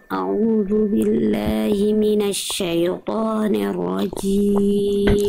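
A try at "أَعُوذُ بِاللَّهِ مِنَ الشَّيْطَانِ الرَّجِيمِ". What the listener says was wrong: Oke, Bunda jelaskan A-nya. A'u, jangan au. A'u, A-nya jelas, mana hamzahnya, mana ainnya. A'udzu billahi minasyaitonir. Ni jangan nir. Nir rajim bukan ni tapi ni. A'udzu billahi minasyaitonir rajim. Pastikan suaranya hak billahinya ada suara Bunda. Ada mengalir suara dan mengalir nafas. A'udzu billahi minasyaitonir rajim. Jangan sampai a'udzu billahi mina ya.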